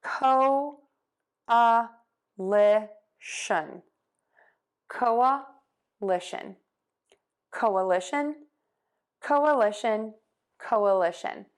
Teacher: my voice box is off for the sh sound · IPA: koʊ-ə-lɪ-ʃən